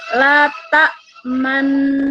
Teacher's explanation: jangan langsung letak manna langsung mencucu, tapi hunah dulu. Setelah hunah baru kita ikuti mencucunya ya. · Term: ismam